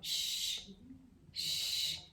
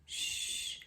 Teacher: Repare, não é S só, é sh. Então muda aqui a sua boca, continua não usando corda vocal, é parecido com o S. Mas você muda a boca, faz um bico.